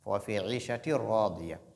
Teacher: Ra fait partie des huruf de al-idgham bi ghayri ghunna. Donc il faut introduire le tanwin qui est là dans ra sans faire ce qu'on appelle la nasalisation.